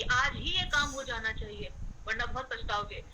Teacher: हम स्ट्रेस देकर बोलते हैं कि आज ही ये काम हो जाना चाहिए वरना बहुत पछताओगे। तो आज ही हमने जो बल देकर बोला है उसका मतलब है कि ये आज ही होना चाहिए